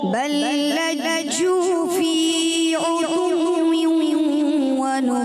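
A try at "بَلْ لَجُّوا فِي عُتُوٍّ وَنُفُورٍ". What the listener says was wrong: جی جے جیسی آواز سے بچنا ہے. بل لجوا فی عتو ونفور.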